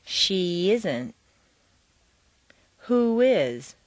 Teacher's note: add a y Glide after an e sound and a w Glide after an oo sound